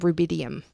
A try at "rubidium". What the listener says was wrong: You said rubidium, like Ruby D. Rubidium. I heard rubidium.